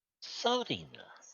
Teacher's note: Notice when she says that there's a slight sibilant sound to the beginning of the word.